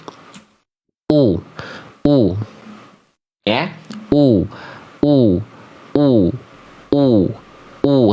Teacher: Sempurnanya harakat domah itu dengan memuncungkan mulut